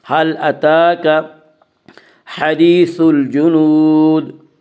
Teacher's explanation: تا کے اوپر کھڑا زبر ہے، کھڑا زبر کو ایک الف کے برابر کھینچ کر پڑھیں گے